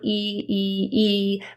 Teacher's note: when you produce an e sound the middle of your tongue is high in your mouth